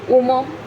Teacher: Y el primero lo tenemos un proceso en el que la fricativa labiodental sorda se aspira primero y luego pasa completamente a desaparecer, ya no se utiliza.